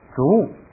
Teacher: 三声后边要发一个啵的口型